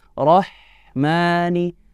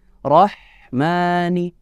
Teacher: huruf h nya yang saat dia disukun dimatikan harus dilepaskan